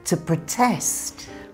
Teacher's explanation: when it's a verb, in British English, the stress moves to the second syllable